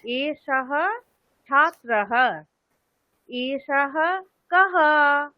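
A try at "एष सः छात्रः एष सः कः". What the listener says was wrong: হ্যাঁ, একদম একদম সঠিক, ভালো হয়েছে।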